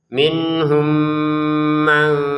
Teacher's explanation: Karena mim sukun pertama masukin kepada mim yang kedua disertai dengan dengungan. Dua harakat dengungannya ya.